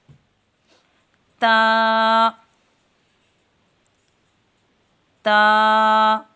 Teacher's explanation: زبان کی نوک جب اوپر کے اگلے دو دانتوں کی جڑ کی طرف والے آدھے حصے سے لگے تو تا ادا ہوتا ہے، اور تا کی صفت ہے کہ یہ باریک ہے۔